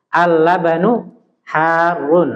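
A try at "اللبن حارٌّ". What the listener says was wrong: Ya, jadi ditasdid ya.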